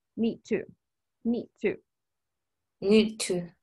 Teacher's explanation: it's like I'm not pronouncing the letter D I'm just saying me to